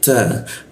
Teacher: huruf ta ujung lidah bertemu gigi